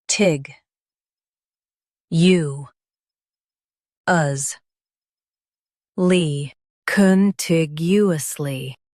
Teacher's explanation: Stress tig and keep you light.